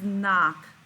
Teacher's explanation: is making that ah sound which is a short o sound